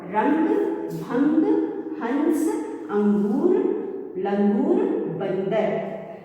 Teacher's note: जब अंग की मात्रा वाले शब्दों को हम पढ़ते हैं तो हमारे मुंह और नाक दोनों से ध्वनि आती है